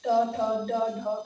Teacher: ये मूर्धा से उच्चारित होते हैं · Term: मूर्धन्य वर्ण